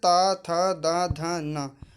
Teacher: ता वर्ग दंत के अंतर्गत आता है